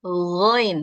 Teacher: untuk huruf Gin kita lembutkan kita hilangkan suara ngorok-ngoroknya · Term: huruf Ghain